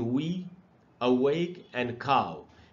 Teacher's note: Because the sound is produced beginning with the lips. अभी जब डब्ल्यू को बोलेंगे आप तो दोनों होठों का इस्तेमाल होता है, एंड ending with the back of the tongue.